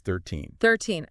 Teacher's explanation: So for all the numbers ending in teen, 13, 14, 15, and so on, the rule is pretty consistent. You stress the second syllable. The end part, the teen.